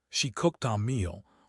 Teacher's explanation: Instead of stopping the air after the K or CH, you release the air into the vowel. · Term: linking to vowels